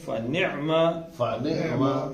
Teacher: ہا نہیں نکالنی، عین نکالنی ہے حلق کے اوپر سے